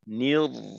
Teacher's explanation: আচ্ছা এবার শেষের অংশ দেখি, নির্রাজিম নির্রাজিম, হ্যাঁ রকে আমরা একটু শক্ত ভাবেই ধরবো, আওয়াজ তো চালু রয়ে, নির্র এখানে রয় আওয়াজটাকে একটু মোটা করে ধরে রাখতে হবে